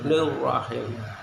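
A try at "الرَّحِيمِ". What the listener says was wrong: Nirrahim. Bukan i. Nah itu yang menjadi catatannya. Jadi harus ditekan. Ketika kasrah muncul huruf i-nya itu jelas sekali.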